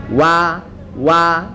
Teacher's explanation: huruf wawu, wa itu diawali dengan bibir kita yang maju sedikit.